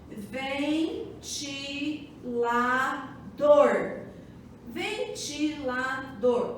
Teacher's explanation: A sílaba tônica está onde? No dor, que é a última sílaba.